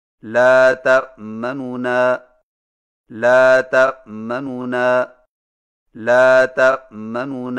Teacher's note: دو نونوں سے پڑھیں لیکن پہلے نون کی پیش کو جلدی سے پڑھیں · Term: اختلاس